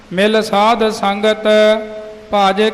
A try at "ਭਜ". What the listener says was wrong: ਪਾਠ ਮਿਲ ਸਾਧ ਸੰਗਤ ਭਾਜ। ਭਜ ਜੋਰ ਕੱਸ ਕੇ ਨਹੀਂ ਬੋਲਣਾ, ਹਾਂ, ਅਦਕ ਨਹੀਂ ਲਾਉਣਾ। ਮਿਲ ਸਾਧ ਸੰਗਤ ਭਾਜ ਕੇਵਲ ਨਾਮ। ਕਈ ਭੱਜ ਜੋਰ ਕੇ ਕੱਸ ਕੇ ਬੋਲਦੇ, ਉਹ ਨਹੀਂ।